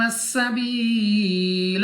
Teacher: या साकिन से पहले जेर या मद्दा खींच कर पढ़ेंगे